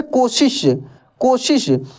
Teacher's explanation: इसका उच्चारण अंदर से निकलता है, श श। और तालव्य श का उच्चारण तालु से।